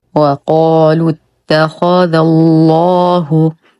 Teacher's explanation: نرقق الذال ونخلص من تفخيم الخاء وننتقل من فتحتها الى تجديد اللام المغلظه في اسم الجلاله جل في علاه لانه سبق بفتح